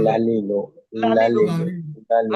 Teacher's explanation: জিহ্বার আগা উপরের দাঁতের মাড়ির গোড়ায় স্পর্শ করে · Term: ল্যাম